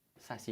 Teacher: Quem é a sílaba forte de saci? É o si, não é isso? Então ela é uma oxítona terminada em i.